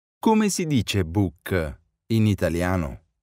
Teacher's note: Note the rising intonation of the sentence to mark that it's a question.